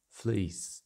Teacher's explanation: In the South, particularly in Standard Southern British, or SSB for short, the close vowel in fleece breaks into a closing diphthong ending in the glide y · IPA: i: